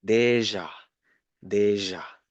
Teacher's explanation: The last one is more difficult because you need to com you need to link the d the e sound make it smooth enough and combine with the j